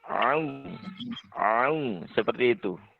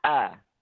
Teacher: Kalau hamzah itu memang suaranya langsung tertahan ketika diucapkan. · Huruf ain tempat keluarnya adalah di tenggorokan bagian tengah ya. Tenggorokan bagian tengah dan suaranya itu seperti diayun sedikit.